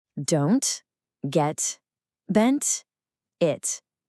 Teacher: I'm not saying don't or get What's happening is my tongue moves up to the roof of my mouth to make the T sound, but then I just stop the air. No puff of sound comes out. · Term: stopped T